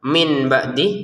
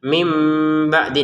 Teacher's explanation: Maka di sini min kita baca mim ya. Nun sukunnya berganti dengan mim sukun.